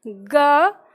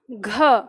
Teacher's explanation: फिर बोलते हैं ग घ, तो ग की तुलना में घ बोलने में फिर से ज़्यादा हवा निकलती है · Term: महाप्राण